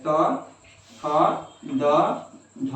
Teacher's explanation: तो अल्प प्राण में हो गया पहला, तीसरा और पांचवा, महाप्राण में हो गया दूसरा और चौथा।